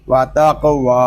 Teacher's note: واو کو ایک الف تک کھینچ کر پڑھیں گے کیونکہ یہاں پہ واو کے اوپر کھڑا زبر ہے ، اور کھڑے زبر کو ایک الف تک کھینچ کر پڑھتے